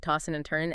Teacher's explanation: you often drop the G sound, right? Tossing and turning, and the D and N might blend. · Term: G dropping